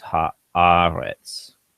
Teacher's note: When that gets added on, the vowel changes to ah. So it's haaretz.